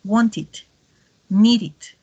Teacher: la e no suena como una e, sino como una i. Wanted, needed, porque el sonido es vocálico.